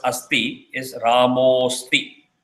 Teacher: So rule Visarga Sandhi rule A1 is applied. So the as becomes O and there is a avagraha that is added. So Ramaha plus asti is Ramosti.